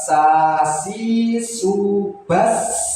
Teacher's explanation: Jadi S-nya atau desisnya itu berlebihan, S-nya itu berlebihan.